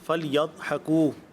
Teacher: ضاد کا جو مخرج ہے وہ زبان کی کروٹ اور داڑھوں کی جڑیں ہیں